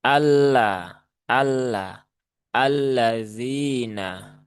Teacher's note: untuk membaca lam bertasydid itu tidak perlu ditahan terlalu lama